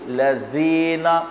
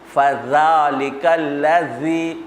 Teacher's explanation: جیسے آپ پڑھتے ہیں نا صراط الذین، دیکھیے لذین، یا ارأیت الذی یکذب فذلک الذی، دیکھیے میں زبان کی نوک باہر نکال رہا ہوں، اگر ایسا نہیں کریں گے تو پھر یہ زا بن جائے گا۔ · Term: ذال